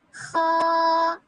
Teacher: پیچھے سے زبان کو اٹھائیں گے تو یہ حرف ادا ہوگا خا. آگے سے ہونٹوں کو گول نہیں کریں گے